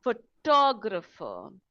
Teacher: You'll notice that the photographer, the stress is on the second syllable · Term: word stress